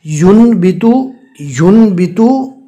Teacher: نون ساکن کو میم سے بدل کر پڑھنا ہے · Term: اقلاب